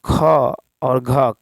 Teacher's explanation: ख और घ कंठ महाप्राण व्यंजन है